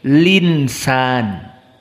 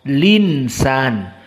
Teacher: Harokatnya pada insan, pada hamzah dipindahkan kepada yang sebelumnya yakni lam. Jadi al-insan dibaca hamzahnya hilang jadi linsan. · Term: an-naql